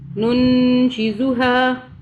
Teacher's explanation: اب یہ شین بھی اخفا کے حرف میں سے ہے، ہم اس نون پہ اخفا کر رہے ہیں، یعنی کہ 2 سیکنڈ کے لیے ہم غنہ کر رہے ہیں